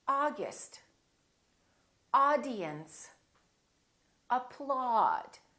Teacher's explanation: automobile August we don't say August we don't say ow and we don't say the British way we don't say all we say ah August audience applaud so don't say applaud and don't say apploud